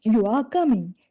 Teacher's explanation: if I raise my pitch at the end, you are coming, suddenly it becomes yes or no question. That small change in the tone of your voice changes the meaning even though the words stay the same.